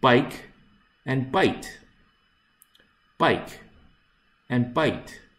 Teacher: if you do not pronounce the last consonant it sounds like by